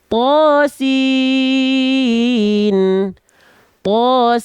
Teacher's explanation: Bacalah sesuai nama hurufnya dan panjangkan 2 harokat pada huruf yang berfathah tegak, yaitu huruf to. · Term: huruf-huruf muqatta'ah